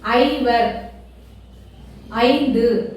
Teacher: ஐவர் ஐந்து சொல்லும்பொழுது ஐங்குற எழுத்தை தனியா சொல்லும்போது ஐ அப்படின்னு சொல்லுவோம் ஆனா ஐந்தோட சேர்த்து சொல்லும்போது ஒரு அரை மட்டும் குறையும் அரை மாத்திரை மட்டும் குறையும் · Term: ஐகார குறுக்கம்